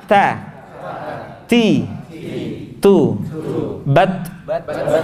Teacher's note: Jadi ada nafas yang keluar kayak Cinta Laura gitu. · kalau mengucapkan ta, nafasnya harus mendesis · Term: huruf ta